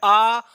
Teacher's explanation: और यहां पर जो विवृत देख रहे हैं, इस विवृत में केवल एक ही वर्ण आता है जिसे हम कहते हैं आ, क्योंकि आ जब हम बड़ा आ का उच्चारण करते हैं आ, तो पूरा हमारा मुख विवर खुल जाता है